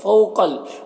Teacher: واو لین ہے یہاں پر، اسے نرم آواز کے ساتھ جلد پڑھیں گے۔ قاف حروف مستعلیہ میں سے پر پڑھیں گے۔